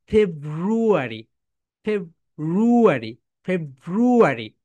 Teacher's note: করতে হবে my dear soldiers ফেব্রুয়ারি উপরের দাত নিচের ঠোটের সঙ্গে উপরের দাঁত নিচের ঠোটের সঙ্গে অবশ্যই টাচ করবে